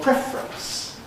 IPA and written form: ˈprefrəns (preference)